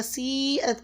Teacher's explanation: سیئت کی مد کو 5 سے 6 الف کے برابر لمبا کھینچیں